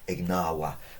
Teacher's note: Remember the V is, we're told, pronounced more of a W.